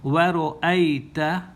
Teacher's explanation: ya sakin coming after the fatha, this vowel fatha, cause this to become a diphthong